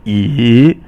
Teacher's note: Remember, the first tone is like yi, which is a higher level tone, and then the second tone is yi, which is a rising tone, and so and then the third tone is like yi, which is falling and then rising